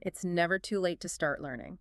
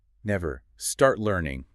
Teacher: It has that kind of heavy, light, heavy beat. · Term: stress pattern